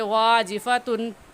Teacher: تن پر غنہ نہیں کریں گے کیونکہ تنوین کے بعد حروف ہلکی حمزہ ہا، عین ہا اور غین خا میں سے حمزہ آ گیا، اس لیے یہاں پر غنہ نہیں کریں گے۔